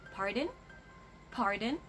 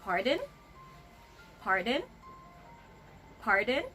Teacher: Be careful with that intonation. Like I said, it should always be a rising intonation.